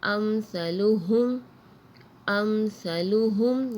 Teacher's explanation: یہاں میم ساکن کے بعد سا آ رہی ہے تو ہم نے یہاں غنہ نہیں کیا